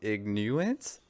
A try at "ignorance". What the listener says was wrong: Can you not pronounce your R's? Ignorance.